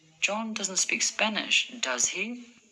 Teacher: My voice went up at the end with, does he? Because I'm not sure whether he speaks Spanish or not.